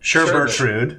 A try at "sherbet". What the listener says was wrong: It's sherbet. Yes, there's no second R. Sherbet.